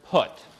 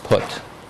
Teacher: it's created by taking the tongue bringing it back raising it a little bit and rounding the lips